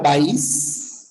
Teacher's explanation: Si tuviéramos una palabra como país, date cuenta de lo siguiente, ¿no? La fuerza de voz está en la I. Pero no hay problema porque son dos sílabas, ¿no?